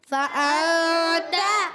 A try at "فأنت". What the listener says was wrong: تا کو کھینچنا نہیں، تا پر زبر ہے.